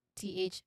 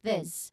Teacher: the version of th sound we used here is the voiced one, where your throat vibrates.